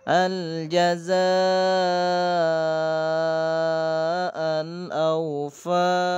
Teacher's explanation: maka disebut mat wajib muttasil, maka wajib dibaca 6 harokat atau 3 alif, 6 ketukan ya